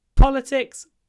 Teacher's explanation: in politics there's a pause before the unvoiced P